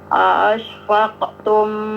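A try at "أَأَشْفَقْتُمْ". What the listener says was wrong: Jangan ditahan tumnya langsung karena itu izhar ya.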